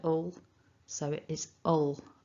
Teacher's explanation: we've got that weak schwa, and it is a little tiny one there with a dark L at the end